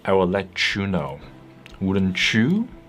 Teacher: t plus y becomes CH as in teach or Peach